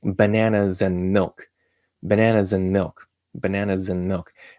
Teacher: the and D turns into just a n